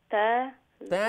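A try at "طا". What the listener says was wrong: नहीं, ता नहीं, ता तो नहीं, ता फुल माउथ होगा। साद दाद ता ज़ा ए 4 letters हुई फुल माउथ इस्तेलार सिफत है ना, तो आवाज ता उफरत दिखे जाए तो साद दाद साद दाद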